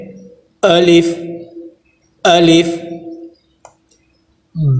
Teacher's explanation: الف کو پڑھنے کا طریقہ یہ ہے کہ آواز کے اندر جھٹکا نہ ہو، بالکل آواز کو نرم رکھ کے